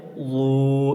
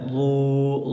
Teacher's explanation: یہ ضاد کی آواز یہاں زبان کی کروٹ اور اوپر کے مسوڑھے سے نکلتی ہے. یہ ضاد کا مخرج زبان کی کروٹ اور اوپر کے دانتوں کا مسوڑھا.